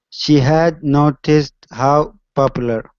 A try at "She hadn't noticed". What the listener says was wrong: Okay, make sure to pronounce the NT here. Hadn't. She hadn't noticed.